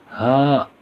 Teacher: ہا جو ہے حلق کے سینے کی طرف والے حصے سے ادا ہوتا ہے۔ جیسے ہا، تو اس میں سینہ ہلتا ہے، یعنی حلق کا سینے کی طرف والا جو حصہ ہوگا اس سے ہا ادا ہوگا۔